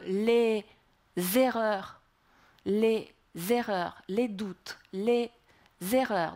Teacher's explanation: on doit rattacher le Z à la syllabe qui suit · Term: liaison